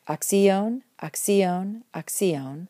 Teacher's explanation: the accent stays happily on the stem and doesn't move into the ending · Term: Persistent accent